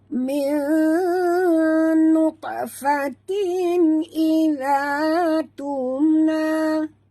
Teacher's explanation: Nun mati bertemu nun, idgham ma'al gunah. Kita kena dengung sepenuhnya, 100% dengung 2 harakat ya.